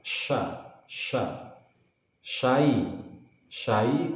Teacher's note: Shin berasal dari tengah lidah dengan angin yang tersebar luas.